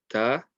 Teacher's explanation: this comes from the tip of the tongue touching between the gums and the top 2 teeth